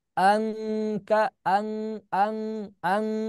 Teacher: untuk qof dan Kaf dia bunyi samarnya betul-betul kuat di engnya